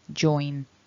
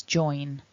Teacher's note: join has that nasalized n ending which happens up in the nose